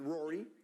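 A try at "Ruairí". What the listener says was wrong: Well, we would pronounce it Rory. So a bit more of a U sound, but it is the Irish for Rory.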